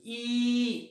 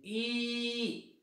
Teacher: ईचा उच्चार करत असताना आपल्या जिभेचा फ्रंट पार्ट वापरण्यात येतो, त्यामुळे त्याला फ्रंट म्हटलंय पहा.